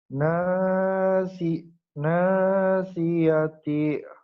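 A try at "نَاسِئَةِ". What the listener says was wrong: nasiati bagus tuh pinter terus.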